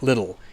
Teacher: So, in British English, a word like little has a very strong T in the middle of it. Whereas in Australian English and American English, that T is pronounced more like a R. So, the word little in British English would be pronounced like little in Australian or in American English. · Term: flap T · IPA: /ˈlɪɾl̩/